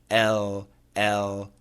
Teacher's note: L L The tongue is in the same position. The dark L happens inside the mouth on the alveolar ridge.